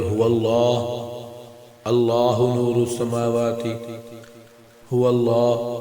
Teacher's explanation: لام اللہ کے لفظ کی صورت میں موٹا پڑھیں گے، یعنی کہ اس پر اللہ کا لفظ ہو.